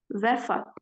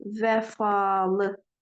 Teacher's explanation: bir dənə şəkilçi artırdığımız zaman orada uzanma əmələ gəlir. Olacaq vəfalı.